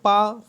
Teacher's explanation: पा को हम लोग अघोष और अल्प प्राण कहते हैं